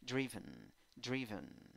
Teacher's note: 7, 6 letras, 6 sonidos, 2 sílabas, fuerza de voz, primera sílaba contando izquierda a derecha. En la primera sílaba, I con puntito, significa I débil, I que se duerme. Segunda sílaba, schwa, a. No es ni A, ni E, ni O.